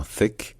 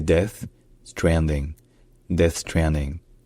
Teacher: le fameux son comme dans thing ou comme dans thick avec le l'air qui passe entre la pointe de la langue et les dents